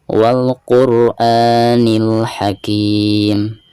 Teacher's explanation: ketika membaca a-nya di sini dipanjangkan 2 harokat karena dihukumi mad badal